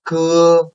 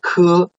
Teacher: the second one, ke is aspirated